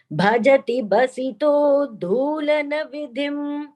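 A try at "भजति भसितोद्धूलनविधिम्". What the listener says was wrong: Mahapranas. Bhajati bhasito dhulana vidhim. 4 Mahapranas in that part. So each one should be clearer.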